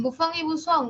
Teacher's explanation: Y resulta que ambas, la FA y la SA, son fricativas.